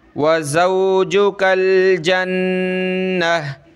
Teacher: गोलता पे जब भी हम रुकेंगे, वक़फ़ करेंगे तो वो गोलता हा में कन्वर्ट हो जाती है, तो यह हा बन जाएगी।